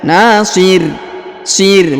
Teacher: huruf ro kita sukunkan dan kita berikan bacaan tipis ya Nasir Sir bukan Nasir tapi ditipiskan ya Nasir ditipiskan huruf